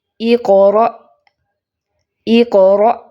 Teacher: حروف شدیدہ کی ادائیگی میں پہلے لیول پہ، پہلے درجے پہ ان کو ادا کرتے وقت مخرج پوری طرح بند ہو جاتا ہے، آواز اس میں قید ہو جاتی ہے، آواز بند ہو جاتی ہے۔ پھر جب وہ آواز نکلتی ہے حروف کے مطابق ان کے میکنزم کے تھرو، مثلاً حروف قلقلہ میں قلقلہ کے تھرو اور شدیدہ محموسہ میں ہمس کے تھرو، تو پھر آواز سخت ہو کے نکلتی ہے، ان کی ادائیگی جلدی سے ہو جاتی ہے۔ · پہلی مثال دیکھیں قاف کی، اقرأ اقرأ، دیکھیں فوراً سے آواز بند ہو گئی، پہلے اق کرتے ہوئے کیا ہوا؟ مخرج بند ہوا، پھر ریلیز کیسے ہوا؟ قلقلہ کے تھرو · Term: حروف شدیدہ مجہورہ